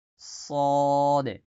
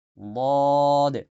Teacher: দাল চিকন করে, বদ মোটা করে।